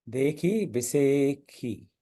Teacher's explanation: ये बीच वाला श, मध्यम श, मध्य श, इसको प्राय ख पढ़ा जाता है।